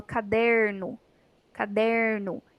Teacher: A palavrinha não tem nenhum acento, mas ela tem a sílaba der, que é mais forte. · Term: sílaba tônica